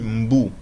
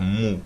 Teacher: Ensuite, on a le filet d'eau, la mer ou l'océan, etc., qui se dit mbu en lingala. Mais en abrégé, on peut dire mu, c'est-à-dire on peut retirer le B.